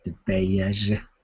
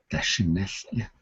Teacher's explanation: Notice that at the end of the word it has nasal high tone.